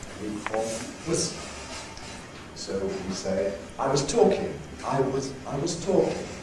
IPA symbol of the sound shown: wəz